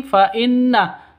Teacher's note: nun tasydid ghunah musyaddadah dengung dua ketukan